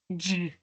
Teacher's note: We'll now go to the next row, just has one pair of affricates. Remember, this is the combination of a stop and a fricative. We have ch and and turn on our voice, and it's J.